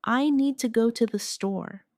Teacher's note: The stress is on need and store.